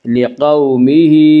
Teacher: واولین وہ واو جو ساکن ہو اور اس سے پہلے زبر ہو، واولین کو نرم آواز کے ساتھ جلدی پڑھیں گی۔